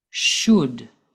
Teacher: we do not pronounce the L